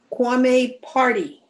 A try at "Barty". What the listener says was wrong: No, Barty. With a B.